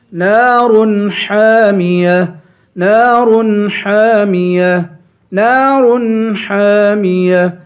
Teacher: نون کے بعد الف ہے، الف حرف مدہ ہے، اسے ایک الف کے برابر کھینچ کے پڑھیں گے